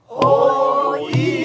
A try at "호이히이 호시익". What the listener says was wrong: 이를 넉넉하게 해줘야 돼요. 그런데 거기서 빼먹지 말고 박자 빼먹지 말고 호이히기 호식시다.